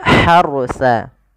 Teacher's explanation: Ini ha di sini ha kecil, jangan dibaca dengan ha besar, jangan tasqil harsa, tapi dia harsa. Huruf ha yang kecil itu dikeluarkan dari tenggorokan tengah.